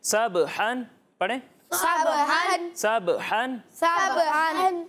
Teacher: यानी जब आप इसको पढ़ेंगे तो इसे सब हन नहीं पढ़ेंगे, ठीक है, इसे पढ़ेंगे सब हन। ये जो बा की आवाज़ लौटती हुई महसूस हो रही है ना, ये है कलकला